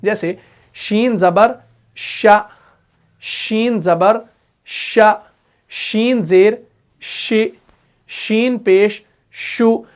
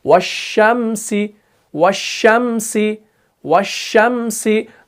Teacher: पूरी आवाज फैल रही है और शीन अदा हो रहा है। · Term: सिफत तफशी